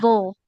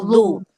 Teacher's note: ujung lidahnya tempelkan ke ujung gigi seri atas